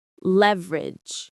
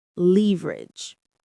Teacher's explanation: The stress is on the first syllable.